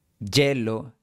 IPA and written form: 'ɟʝe.lo (hielo)